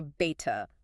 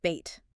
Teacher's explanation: you don't want a heavy puff of air on the tea. Like you wouldn't say beta. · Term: not aspirated